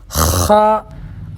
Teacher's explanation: خا، آواز پر توجہ دیں، خا یہ بھی حلق سے نکلے گا، جیسے آدمی کھنکارتا ہے نا، کھنکا کر کے تھونکتا ہے، اس طریقے سے آواز نکلے گی